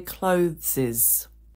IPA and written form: klʊðsɪz (clothes)